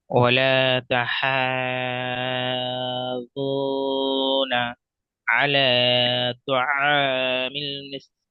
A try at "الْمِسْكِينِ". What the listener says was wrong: তিন নয়, মিসকিন, এটা কাফ রয়েছে।